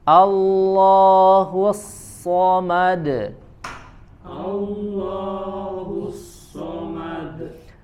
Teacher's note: termasuk di huruf shad, ya tebalnya harus lebih tebal. Dia punya sifat namanya itbaq, ya melebihi ketebalan huruf kho, ko ataupun go, ya. Dia lebih ditempelkan bibir atau ya bibirnya dengan langit-langit.